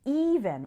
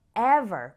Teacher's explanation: We say even with an E like in see, but we say ever with an E sound like in get